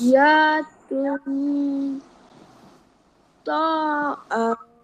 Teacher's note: nun sakinah atau tanwin baris atas, baris bawah atau baris depan bertemu dengan huruf to, di mana kena baca dengung dua harokat